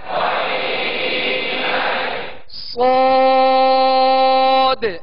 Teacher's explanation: صاد کو سختی کے ساتھ یعنی سیٹی کی آواز پیدا ہو اس طرح ادا کرنا ہے